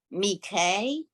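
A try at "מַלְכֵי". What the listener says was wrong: right, get that L sound in there.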